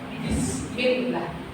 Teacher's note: BIS tapi tegas. Kan huruf ba itu mulut atas ketemu mulut bawah dan dia agak ditekan.